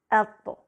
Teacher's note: طا ایک مفخم یعنی بھاری حرف ہے، اس کے لیے زبان کا پچھلا حصہ اوپر اٹھایا جاتا ہے